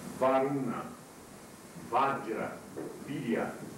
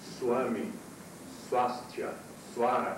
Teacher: a letra V no meio das palavras não tem som de V. Tem som de W. Ou, para satisfazer aos brasileiros, tem som de U.